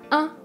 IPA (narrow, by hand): ɛ̃